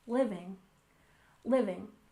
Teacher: Living has a stress on the first syllable